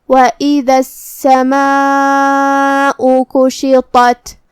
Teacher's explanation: مد واجب متصل کا معنی ہے کہ حرف المد اور اس کی وجہ جو کہ حمزہ ہے دونوں ایک ہی کلمہ میں ہو. مد واجب متصل میں ہم اپنی آواز 4 مد کے برابر لمبی کریں گے. آخر میں حمزہ پہ پیش ہے تو اس کا دھیان رہے.